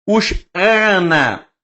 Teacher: Eu estou pronunciando o segundo A de forma gutural